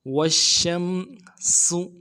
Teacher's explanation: والشمس میں واو کو شین کے ساتھ ملانا ہے، شین میں حروف تفشی واضح کرنا ہے، شین کے اوپر تشدید ہے زور دیں گے اور شین کو آگے میم کے ساتھ ملانا ہے. والشمس سین کی سیٹی کو واضح کریں گے اور پیش کو نرم سے ادا کریں گے